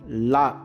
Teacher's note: நாவின் இரு பக்கங்கள் தடித்து மேல் பற்களின் அடியை தொடுவதால் லகரம் தோன்றும்